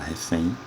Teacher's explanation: a palavra refém, que tem como sílaba tônica a última, palavra oxítona, e termina em N.